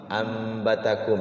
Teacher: Bertemu dengan satu huruf ba berarti iqlab, mingkem ya